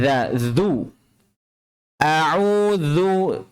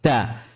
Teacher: makhraj huruf dzal itu berada pada punggung ujung lidah pada posisi menempel di ujung dua gigi seri atas. Punggung ujung lidah.